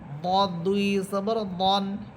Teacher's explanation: জিব্বার গোড়ার কিনারা উপরের মাড়ির দাঁতের গোড়ার সাথে লাগবে, উপরের মাড়ির দাঁতের বা চোয়ালের দাঁতের গোড়ার সাথে লাগবে।